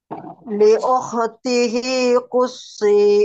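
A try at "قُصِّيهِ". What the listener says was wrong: Nah, ini sudah lumayan Bu, sudah ke shin. Tinggal dipertebal lagi Bu ya. Diusahakan tidak menjadi shin.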